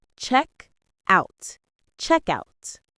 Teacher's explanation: The two words are pushed together with the stress on the first one.